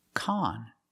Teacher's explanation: We use the short ah sound like hot and stop.